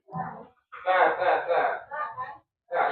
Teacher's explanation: ujung lidah menyentuh ujung gigi dari atas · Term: huruf ta